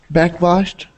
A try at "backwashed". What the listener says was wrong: good backwashed okay excellent